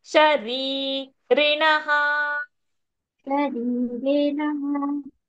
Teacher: So first re long, second re short.